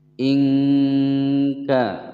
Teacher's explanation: Tidak boleh membaca qul karena lam bukan huruf qalqalah. Ingka ada nun sukun bertemu dengan huruf kaf, dibaca samar dan didengungkan selama 2 ketukan. Ingka ka dibaca panjang 2 ketukan.